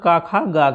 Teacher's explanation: घा का उच्चारण स्थान कंठ होगा